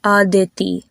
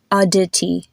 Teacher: The consonants sound much lighter with the Indian pronunciation